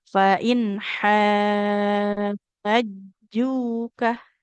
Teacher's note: tapi ha-nya dulu enam harakat baru masuk ke jimnya ditekan karena bertasydid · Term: mad lazim